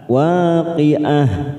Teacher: Ketika kita wakaf di sini maka tak marbuto ini kita baca seperti huruf H